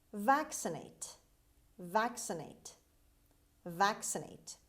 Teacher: The stress is at the beginning. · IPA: /ˈvæksəneɪt/